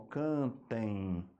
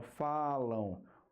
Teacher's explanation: como o som passa pelo nariz também além da boca a gente tem o ditongo nasal e como a vogal vem primeiro a semivogal vem depois nós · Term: ditongo nasal decrescente